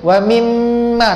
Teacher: Macam mana nak bezakan dengung ikhfa dengan dengung wajibul gunnah ni? Wajibul gunnah mim sabdu nun sabdu, dia dengung yang lekat pada makhrajnya. Macam mim tadi, makhraj mim pada syafatain ini dua bibir. · makhraj mim pada syafatain ini dua bibir. Wa mimma rapat.